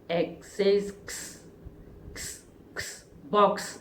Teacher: अब देखिए बॉक्स में लास्ट में इसकी साउंड आ रही क्स